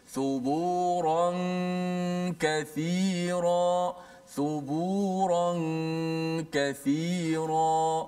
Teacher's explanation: Maka kalau nun bertemu dengan kaf, suaranya di hidung tu lebih mendominasi di hidung daripada huruf-huruf yang lain. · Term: Gunnah